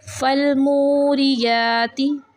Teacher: मू वाव साकिन से पहले पेश है, वाव मद्दा है, इसको हम 3 सेकंड के लिए खींचेंगे। और नेक्स्ट है या पे खड़ा ज़बर, हम इसको 1 सेकंड के लिए खींचेंगे।